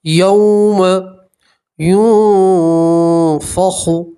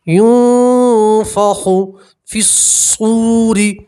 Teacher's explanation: چلیے آگے، یوم ينفخ، یہاں نون سکین کا اخفا ہوگا، نون سکین کی آواز کو آپ ناک میں چھپائیں گے اور ایک الف کے برابر گننا کریں گے